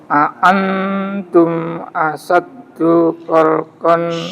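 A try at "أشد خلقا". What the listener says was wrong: Sinnya bisa lebih besar, Mbak. Asyaddu, ya, asyaddu.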